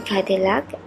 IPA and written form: ˈkædɪlæk (Cadillac)